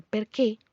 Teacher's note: la tilde en el otro sentido como en perqué es para pronunciarla con la boca más cerrada